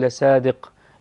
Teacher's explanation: أولا في قوله عز وجل لصادق بالصاد وليس بالسين، أنا أقول لصادق، لازم نفخم الصاد حتى لا تصبح سينا، لصادق وليس لصادق.